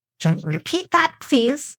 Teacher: stress repeat and please.